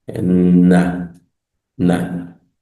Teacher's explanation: la N suena geminada, nasalizada.